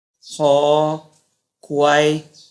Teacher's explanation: 舌根軟腭音，發音時用舌根頂住軟腭，阻擋氣流，令氣流從口腔衝出而成音